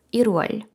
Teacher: приголосною корейці дуже люблять заповнити ось це пусте місце і тому ми вже ль не м'якенькою читаємо а твердою того що в нашій голові вона стала наперед щоб заповнити ось